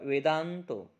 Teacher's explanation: हा दचा उच्चार नाकातून स्पष्ट होतो म्हणून द वर आपण अनुस्वार दिलेला आहे. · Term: स्पष्टोच्चारित अनुनासिक